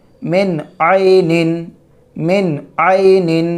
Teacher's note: نون ساکن کے بعد عین حروف حلقی میں سے ہے، نون ساکن کو ظاہر کر کے بلا غنہ کے جلد پڑھیں گے